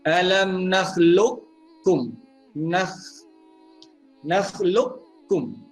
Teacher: kita idgham nakis dengan tidak meninggalkan sifat huruf qaf itu